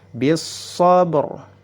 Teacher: Ya, ba-nya memiliki sifat qalqalah, jadi harus dipantulkan. Kemudian huruf ra jika dalam keadaan sukun karena waqaf kemudian sebelumnya ada huruf sukun, dan sebelumnya lagi ada harokat fathah, maka harus dibaca tebal, atau para ulama menyebutnya tafkhim.